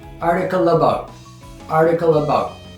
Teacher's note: Article ends in O and about starts with ah, so we get a natural liaison